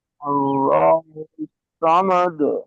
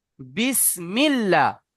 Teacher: আল্লাহ শব্দের আগে জবার আর পেশ থাকলে আল্লাহ শব্দকে পুর করে পড়তে হবে আর জের থাকলে বারিক করে পড়তে হবে যেমন বিসমিল্লাহ এই আল্লাহ শব্দের আগে জের এসেছে তাই এখানে মিল্লা